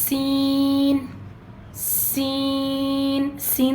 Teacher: سیٹی کی آواز آئے گی، یہ حروف صفیریہ میں سے ہے، سیٹی کی آواز اس میں آتی ہے، اور یہ اس کی صفت ہے، یہ آنا لازمی ہے۔